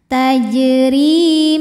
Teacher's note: tarqik sebab berbaris kasrah maka dibacanya tipis tajri RI Thobi'i dahiri karena ada Ya Sukun didahului baris kasrah maka huruf ro panjang dua harakat